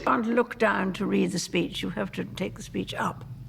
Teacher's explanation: There's a tightness in the jaw. The Queen's lips are quite close together, and the vowel sounds are articulated at the front of the mouth. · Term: the Queen's English